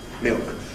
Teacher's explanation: we’re left with the back of the tongue raised, which gives you a kind of unrounded back vowel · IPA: [mɪɯk]